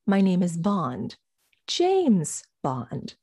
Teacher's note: the second time you say bond you de-emphasize it because now it's old information it's already been mentioned and i now hold the seat the